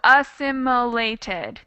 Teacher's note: assimilated that's five syllables and the stress the main stress is on the second